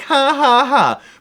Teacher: in most accents the J is pronounced like a wimpy little H